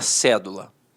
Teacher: a sílaba tônica está na antepenúltima sílaba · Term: proparoxítona